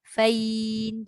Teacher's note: Jangan fine. Ya tu jangan masuk hidung